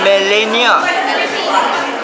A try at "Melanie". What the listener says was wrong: No, it's M-E-L-A-N-I-E.